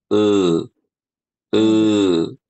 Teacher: Cara menaikkan pangkal lidah dengan melafalkan e e kalau kita baca e pangkal lidahnya naik